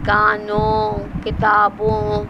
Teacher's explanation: اگر غنہ کے ساتھ واو لگائیں گے مصوتے کا تو وہ او کی آواز نکلے گی، کانوں، کتابوں.